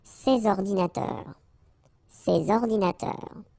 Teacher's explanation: you should make the liaison between S and O